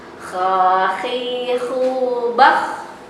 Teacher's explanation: Ketika sukun dia harus tebal bunyinya. Ketika fathah, kasroh, domah juga, gitu ya.